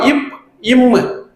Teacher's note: மேல் இதலும் கீழ் இதலும் பொருந்துதால்